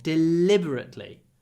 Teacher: Here the stress is on the second syllable.